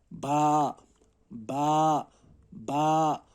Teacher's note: बा का मखरज होता है होंठों के जो अंदर से यानी कि गीले वाले हिस्से होते हैं, उनके मिलाने से बा अदा होता है